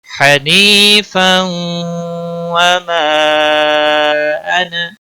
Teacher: تنوین کے بعد حروف یرملون کا واو آیا ہے، ادغام باغنہ ہوگا۔ · وما مد منفصل ہے، 3 الف یا 3 سیکنڈ کے برابر کھینچ کر پڑھیں گے۔